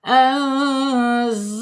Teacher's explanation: An ya ditahan dua harakat ya dibacanya samar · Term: Ikhfa hakiki